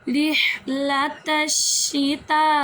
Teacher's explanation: یہاں پر مد متصل ہو رہی ہے، اس کو ہم 2 یا 2.5 الف یعنی کہ 4 یا 5 حرکات کے برابر لمبا کریں گے